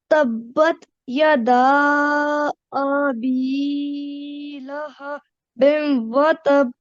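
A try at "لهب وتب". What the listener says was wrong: But you just need to now focus on making this, extending this for about 2 seconds. Lahabim watab. Lahabim watab. So you just need to make sure you elongate that sound for about 2 seconds.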